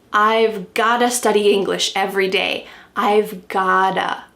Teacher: What's happening with the pronunciation? That T is changing to a D.